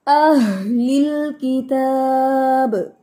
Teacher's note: दो चश्मी हा है उसको सीने से अदा करें, आह की आवाज नहीं आनी चाहिए